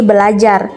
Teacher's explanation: Namun, di sini bunyi R pertama didisimilasikan dengan bunyi L sehingga menjadi belajar